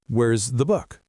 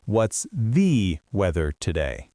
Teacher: The 'the' is so quick you barely hear it.